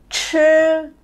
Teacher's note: Vì nó vừa có C vừa có H thì tôi phải vừa cong lưỡi vừa bật hơi.